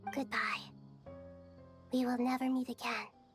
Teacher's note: cute, breathy, soft little voice